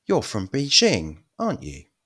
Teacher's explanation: falling interation means you're fairly sure